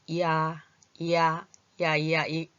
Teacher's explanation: 처음에는 이가 먼저 들어왔다가 아가 나오는 소리. 이야, 이야, 이야, 이게 짧게 앞에 빨간색 이는 짧고 이 파란색 아를 뒤에 글자를 더 길게 더 좀 힘있게 얘는 짧게 발음하면 이런 소리가 나요. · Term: 이중모음